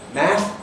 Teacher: in the south of England, in received pronunciation, we have a short vowel still in math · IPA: /mæθ/